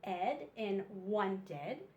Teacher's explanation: This special sound sounds like a short e and a d sound.